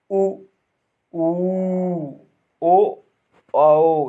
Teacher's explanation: वृत्तमुखी स्वर वे स्वर कहलाते हैं जिनके उच्चारण करते समय हमारे होठों का आकार गोलाकार हो जाता है।